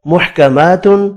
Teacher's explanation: کھڑی زبر کو ایک الف کی مقدار میں کھینچ کر پڑھیں گے